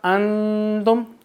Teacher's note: نون کے بعد تا ہے، تو ہم اپنی آواز ناک میں لے کے جائیں گے، غنہ کریں گے